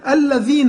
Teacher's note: الذين لازم نخرج في طرف لساننا في الذال